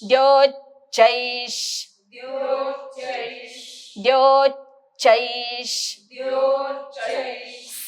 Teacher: चै झाल्यानंतर मी दातावर दात ठेवणार, मागणं जीभ रेटणार आणि श्वासाचा आवाज चैश